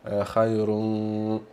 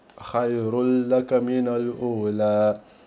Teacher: con questo idgham qua non c'è la hunna, perché mi hanno detto che è in quale idgham che non facciamo la hunna.